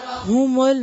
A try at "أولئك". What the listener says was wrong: مل نہیں ہے مل مل مل کی ساؤنڈ نہیں آنی چاہیے مل مل جی پھر سے پڑھیں أولئك پھر سے اولائک واضح کریں